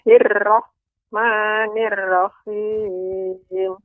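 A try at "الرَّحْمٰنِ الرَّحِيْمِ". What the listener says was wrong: masih terdengar getaran agak lebih banyak pada huruf road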